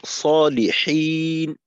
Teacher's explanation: হায়ের উচ্চারণটাকে আরেকটু চাপ দিই, অন্যথায় গোলহার দিকে চলে যাবে অনেকটা